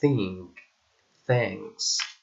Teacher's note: a voiceless dental and fricative sound, like in think, thanks.